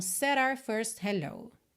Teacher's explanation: essa palavra our, nosso, nossa, ser reduzida ao som da letra R, o nome da letra R, R. Então, said our first hello.